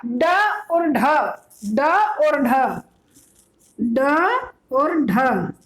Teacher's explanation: ताड़नजात ध्वनियां भी कहते हैं इनको, गौण वर्ण भी कहते हैं और उत्क्षिप्त व्यंजन भी कहते हैं